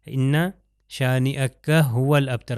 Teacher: یہ خاص خیال رکھیے کہ انا کو لمبا نہیں کرنا